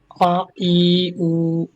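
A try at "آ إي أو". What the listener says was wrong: না, টান হলো না তো। ই উ একালিফ।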